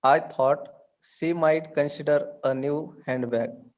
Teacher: consider should be given more stress